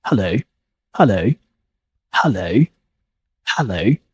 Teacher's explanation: the schwa sounds and the O sound, the round shape. 2 vowels happens together. This is what we would call a diphthong.